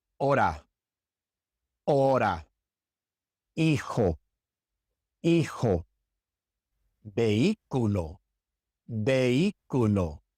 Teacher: You can see in these words that we do not pronounce the H. We never pronounce the H in Spanish. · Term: silent